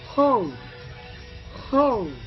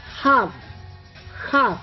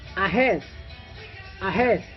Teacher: the H is voiceless, the position is glottal, and the manner is fricative.